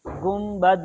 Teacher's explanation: نون ساکن کے بعد با آ جائے تو وہ میم ساکن سے اس کو بدل کر پڑھتے ہیں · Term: اقلاب